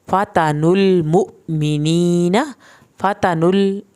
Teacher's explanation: पेश को लाम के साथ मिलाएंगे, लाम को हिलाना नहीं है।